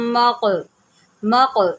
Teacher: قلقلہ ہوگا یہاں پر، کیونکہ قاف جو ہے حروف قلقلہ میں سے ہے